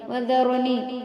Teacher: ذرنی میں را کو پر پڑھیں گے، موٹا پڑھیں گے